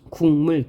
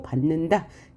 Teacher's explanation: 조음 방법이 바뀐 거죠. 조음 방법은 바뀌는데 조음의 위치는 바뀌지 않습니다. 조음의 위치는 기억이 여린 입천장 소리인데 여린 입천장이면서 비음인 이응으로 바뀌었고요. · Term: 비음화